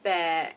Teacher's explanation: It's a sinking tone. It goes down bad, you know, bad, sick.